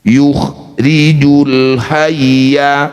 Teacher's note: ra yang berharokat kasroh, ini harus dibaca dengan tarkik atau tipis. Tempelkan ujung lidah di pangkal gigi seri atas.